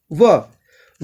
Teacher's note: व का उच्चारण स्थान दंतोष्ठ होता है। यह अकेला ऐसा वर्ण है जिसका उच्चारण स्थान दंतोष्ठ है।